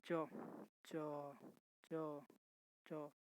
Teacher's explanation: तालु से जीभ टकरा रहा है